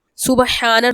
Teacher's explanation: سبحان میں با میں کلکلا کریں گے. ہا پہ کھڑی حرکت ہے، کھینچ کر پڑھیں گے.